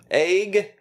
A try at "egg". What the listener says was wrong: No, you're saying it with an A. It's pronounced with an E.